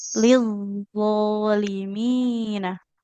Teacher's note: Zo-nya kurang tekan Ibu. Nanti seperti nggak bertasydid ya. Jangan lidho.